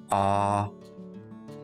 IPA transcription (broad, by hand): ɑː